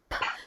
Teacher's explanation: We know that we're using our lips. We know that the air is coming out in a ball, and we know that it is unvoiced.